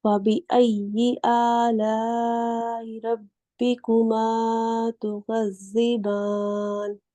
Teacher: آپ نے جو زال ہے اس کی ادائیگی بہت اچھے سے کی ہے، اس میں سختی بھی آنے دی ہے اور وسل ساؤنڈ بھی نہیں بننے دیا